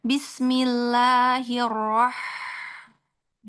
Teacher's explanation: ada hamas ya pada ha. Jadi ada aliran udaranya di situ.